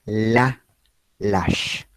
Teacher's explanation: es líquida, es vibrante, suena, precisamente porque está en posición inicial · la describo como lateral alveolar sonora, hablando en términos meramente lingüísticos